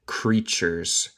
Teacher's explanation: el T suena con CH